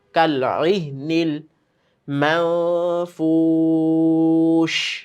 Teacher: আইনটাকে গলা থেকে চাপ দিয়ে আনা